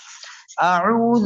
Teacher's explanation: জাল নরম হবে, জিহ্বার আগা দাঁতের আগা।